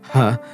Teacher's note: Now, the last of our distinct consonants in Sanskrit is the h. The H sound is classified as a velar. It's aspirated for obvious reasons.